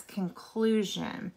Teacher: When it has a T, ion, you're going to hear the sh sound. When you have an sion, you're going to hear the zh sound.